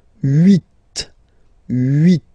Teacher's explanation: final T is pronounced